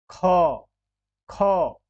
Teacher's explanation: ख यानी कि बहुत ज्यादा देर तक हमने सांस बाहर रखी, हमारी जो सांसों की आवश्यकता पड़ी, हमारे जो प्राण की आवश्यकता पड़ी वो ज्यादा पड़ी, तो इस वजह से ये महाप्राण है।